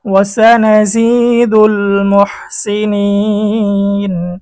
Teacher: মদের হরফের পরে ওয়াকফ মধ্যে আরজি তিন আলিফ টেনে পড়তে হয়